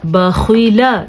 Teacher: یہ خا پھر سے حروف مستعلیہ میں شامل ہے، اسی لیے اس خا کو ہم نے پر پڑھنا ہے، یعنی کہ موٹا کر کے پڑھنا ہے